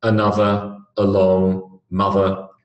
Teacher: So the sound at the beginning of along and the sound at the end of mother is a schwa.